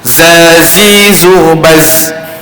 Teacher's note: Makhraj dia sama orang menggunakan 4 batang gigi atas dan 4 batang gigi bawah. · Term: huruf za